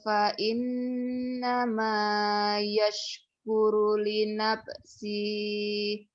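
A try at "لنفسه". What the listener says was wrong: Pendek, li nafsih. Kenapa panjang? Kan nggak ada madnya. Li nafsih. Mad sila qasirah spesial kalau dihentikan jadi pendek. Jangan li nafsihi, jangan. Kalau dihentikan jadi pendek dia.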